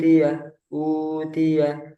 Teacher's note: Yang benar, jadi enggak ada getaran sama sekali di hidung.